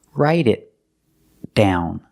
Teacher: The T in write changes to a fast D, write it, write it. And the T in it is a stop T, because it's before a consonant. So stop the air, make the T position and stop the air.